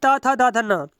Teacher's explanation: यह दांतों को स्पर्श करते हैं